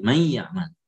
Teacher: Jadi kalau may ya'mal maka dia menjadi huruf yang kedua, yaitu ya, bukan nun. Jadi nunnya itu diganti ke ya. Jadi seakan-akan satu ya bertasydid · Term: idgham